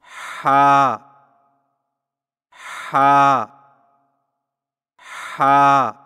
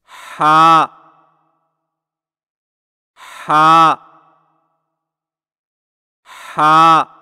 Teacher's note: حلق کی طرف مضبوطی سے دباتے ہوئے باریک اور رگڑ کھاتی سانس میں پڑھیں